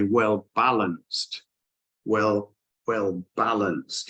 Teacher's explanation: the Top Line the stress is on the first syllable but the bottom line the stress is actually on the second syllable